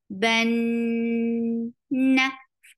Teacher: Ban for fatha open your jaws attached with noon. Noon will get sifa of gunna, and this is akmal gunna. Ban na, but fatha is short.